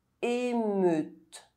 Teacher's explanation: EU is pronounced [ø] if followed by a [t] sound.